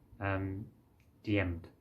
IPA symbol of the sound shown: d